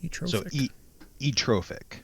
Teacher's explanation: You do not pronounce the TH sound